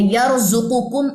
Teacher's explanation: یا را کو موٹا کیجئے کیونکہ اس میں تکرار کی صفت ہے، حروف شبہ مستعلیہ میں سے ہے، را خالی ما قبل زبر آ جائے تو وہ را جو ہے وہ موٹی پڑی جاتی ہے۔ یرزقکم، اس میں را موٹی ہے اور قاف موٹا ہے۔